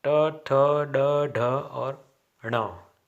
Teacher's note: ये मूर्धन्य वर्ण है और इनका उच्चारण मूर्धा से होता है